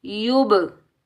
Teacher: जब हम कलकला करेंगे तो डबल साउंड आएगा, टकराव पैदा हो। ठीक है, जैसे हम बॉल को दीवार के साथ मारते हैं तो पलट कर वापस आती है, ऐसे ही जब हम कलकला करेंगे तो डबल साउंड आना चाहिए।